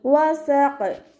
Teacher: വസഖ്, വാവ് ഉച്ചരിക്കുമ്പോൾ ചുണ്ടുകളൊന്ന് സർക്കിൾ ചെയ്ത് കൊടുക്കുക. അവസാനത്തിൽ ഖാഫ് തഫ്ഹീം ചെയ്തിട്ട് ഉച്ചരിച്ച് നിർത്തുക.